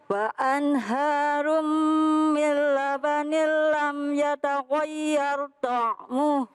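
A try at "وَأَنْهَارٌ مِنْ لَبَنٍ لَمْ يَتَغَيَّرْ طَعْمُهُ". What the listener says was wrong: Pemirsa, ini tadi bacanya lam yataghayyar pakai tafhim tebel, dibaca jangan lam yataghayyar begitu ya. Tuh, kemudian tanwin bertemu dengan huruf mim. Itu bighunah hurufnya ada 4.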